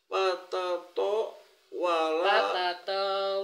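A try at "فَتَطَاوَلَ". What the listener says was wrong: patato wala kenapa panjang patato wala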